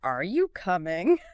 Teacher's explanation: that rising pitch at the end of a yes or no question